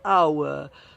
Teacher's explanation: the H is never pronounced